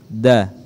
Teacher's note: cara penyebutannya ujung lidah kita disentuhkan di ujung gigi, di pangkal gigi depan atas. Da. Ya, jadi ujung lidah disentuhkan di pangkal gigi depan atas. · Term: huruf da